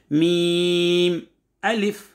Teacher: मीम दोनों होठों के खुश्क वाले हिस्से से अदा होता है